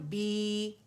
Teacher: جب آپ اسے ادا کرتے ہیں نا بی، تو زبان کا درمیانی حصہ اٹھ جاتا ہے